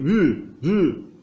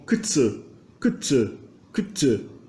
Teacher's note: U, que é representado é um U sem um arredondamento com um arredondamento labial U, né? Ele tem uma espécie de som fricativo, quase um aperto labial em vez de ter um arredondamento.